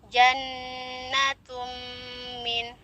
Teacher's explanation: Jannatun, di depannya di situ ada huruf nun musyaddadah kategori akmal ya, paling sempurna. Jadi ditahan selama 2 atau 3 ketukan. Jannatum min, kurang lebih seperti itu. · tanwin bertemu dengan huruf mim, hukumnya idgham bi gunnah. Idgham bi gunnah kategori kamilah. Peleburannya itu secara sempurna, jadi langsung ke mim.